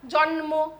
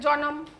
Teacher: এবার স্বরভক্তি হচ্ছে বলে মাঝখানে একটা অ ঢুকে যাচ্ছে